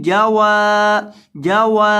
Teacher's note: واو کو لمبا کرنا ہے کیونکہ اس کے بعد الف مدہ ہے